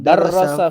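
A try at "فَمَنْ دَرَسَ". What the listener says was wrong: kalimat darasanya harusnya jangan ditasdid.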